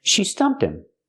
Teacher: We hear that H in him is silent because it's not an important word.